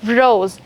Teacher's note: If the alphabet S comes in between two vowels, the sound of the S alphabet is changed into, yes, Z sound. Just like you have in English, you have rose, S-R-O-S-E.